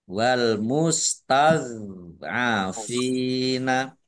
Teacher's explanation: Dok sukun bukan kol-kolah, jangan dipantulkan.